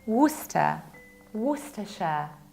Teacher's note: No, it's Worcester sauce, Worcester, Worcester. We don't pronounce middle CE